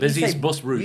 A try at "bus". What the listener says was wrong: You say buzz. Do you say bus? Did you not say buzz?